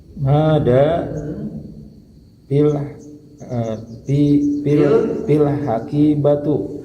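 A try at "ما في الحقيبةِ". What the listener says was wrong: Hakibati. Nah, fi ini mengkasrokan ya. Fil hakibati.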